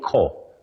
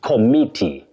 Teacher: But that O after C takes what we call a schwa, a weak vowel sound. You say ko, then stress me, committee, not committee and not committee.